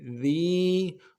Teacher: ذال کو باریک ادا کرنا ہے, یا کے ساتھ ملانا ہے, یا مدہ ہے, ایک الف دال میں کھینچیں گے.